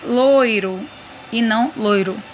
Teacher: percebe que o i quase nem aparece é por isso que ele é chamado de semivogal